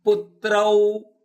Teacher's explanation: ತೌಗೆ ರಕಾರ ಇದೆ, ಹೀಗಾಗಿ ಪೂ ಮೇಲೆ ಆಘಾತ ಇದೆ